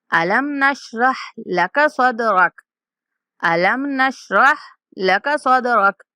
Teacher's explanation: صدرک یہاں پہ جو دال ہے اس کے اوپر ہم قلقلہ کریں گے، صدرک یعنی کہ دال کی آواز کو تھوڑا ہلا کر پڑھیں گے